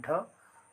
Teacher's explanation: उत्क्षिप्त व्यंजन कहने का अर्थ है कि जीभ का ऊपर जाना और फिर नीचे आना। तो जब हम इन व्यंजनों का उच्चारण करते हैं तो हमारा जो जीभ है वो ऊपर की ओर जाता है फिर नीचे की ओर आता है